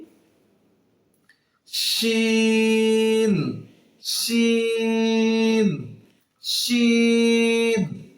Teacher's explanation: জিহুবার মাঝখান তার বরাবর উপরের সঙ্গে মিলিত হয়ে উচ্চারিত হবে